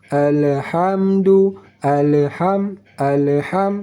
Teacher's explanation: Cara membacanya yang benar, alhamdu, jangan pakai qalqalah pada huruf lam mati. Alhamdu, jangan pakai qalqalah, jangan pantulkan bunyi lam mati karena lam tidak termasuk dari huruf qalqalah.